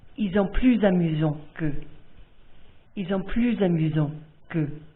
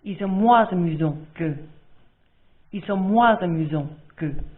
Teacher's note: In these two sentences, the adjective starts with a vowel, which means the S in plus and moins is pronounced, and it's pronounced like a Z